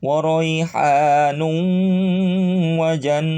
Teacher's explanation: Nu setiap nun sukun atau tanwin fathah kasroh doma menghadapi waw maka hilangkan tanwin dan nun sukunnya kemudian pakai dengungan